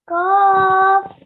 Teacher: Now this qaf, we read it with the middle of our throat, and because it's a thick letter, we pronounce it thickly and with our mouth rounded a bit